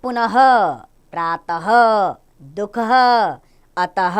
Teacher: विसर्ग का उच्चारण ह की तरह किया जाता है